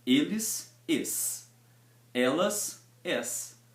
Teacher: a diferença entre eles e elas é apenas a forma como a gente vai abrir o som da vogal